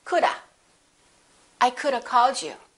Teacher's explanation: If you speak more casually, you can say coulda. You just change the v to a, coulda.